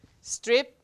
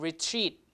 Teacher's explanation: strip unaspirated and Retreat aspirated because it's in a stress syllable